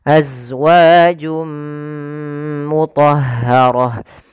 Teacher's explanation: masukkan tanwinnya ke huruf mim suara nunnya hilang maka jadi suara n-nya hilang awalnya azwajun ketemu dengan mim masuk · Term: Idam bunah, idgham bi gunnah